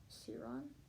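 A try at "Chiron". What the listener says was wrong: well I believe it's pronounced with a sound because it's Greek so Kiron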